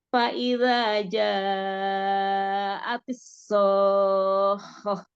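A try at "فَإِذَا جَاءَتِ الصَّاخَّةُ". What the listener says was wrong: Shotnya. Kayaknya Umi belum pangkal lidahnya. Enggak, pangkal lidahnya belum naik yang so.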